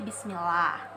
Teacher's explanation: tarkik atau dibaca secara tipis. Nah, hukum bacaan ini tuh terjadi apabila didahului oleh huruf yang berharokat kasroh